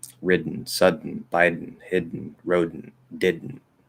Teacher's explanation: we don't open up at all and we just do that nasal plosive into the back into the n sound